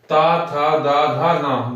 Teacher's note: अब ये दंत से ता था दा धा ना। देखो हर ये सब जो भी हम वर्ण बोलेंगे इसमें जबान जो है हमारी दांतों से लगती है।